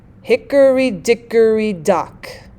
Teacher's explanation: the one stressed followed by two unstressed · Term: dactyl